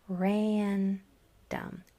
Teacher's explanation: It's like a whiny nasal a, and you can hear it when the next letter is an N or an M, like in random. It's almost like that a is stretched out to almost even 2 syllables.